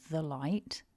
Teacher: we can have a weak form of the because light begins with a consonant